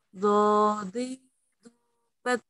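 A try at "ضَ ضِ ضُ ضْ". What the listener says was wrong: Nah, masih nyasar ke huruf dal, jadinya do gitu ya.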